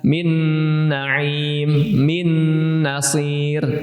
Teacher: Nun ketemu nun, min pasti nahan dan pasti berdengung otomatis. Karena nun dan mim ini adalah kedua huruf yang secara secara bagian tubuhnya atau bawaannya itu sudah mengandung gunnah.